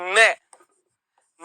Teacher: मैं ओस्ट तो है ही है लेकिन क्या है नासिका मैं बोलेंगे तो नाक में कंपन होगा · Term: पंचम वर्ण